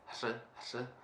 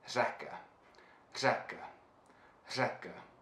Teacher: The sound R in Czech is just a combination of this flapped R, R, and sh. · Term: R with the hat